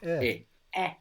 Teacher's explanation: this e is pronounced a little bit Smiley so make a smile and with an open mouth make e and then you will get the sound smile and open mouth